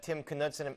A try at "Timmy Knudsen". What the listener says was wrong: Yeah, and the Timmy part's also important.